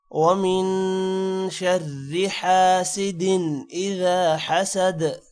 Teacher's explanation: حاسد پہ غنہ نہیں ہوگا کیونکہ حمزہ حروف حلقی آ رہا ہے